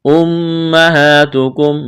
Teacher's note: میم مشدد ہے، آواز ناک میں چھپائیں گے، غنہ کریں گے، کڑا زبر ہے، الف کے برابر کھینچنا ہے۔